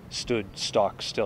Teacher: There's spondees in there. I think there's a lot of beat where both syllables are emphasized